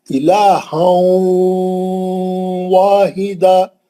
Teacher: تنوین کے اندر جو نون کی آواز تھی اس کو لے کے واو میں گھسے. الہا، تھوڑا نون باقی ہے، تھوڑا واو ہے. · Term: ادغام واو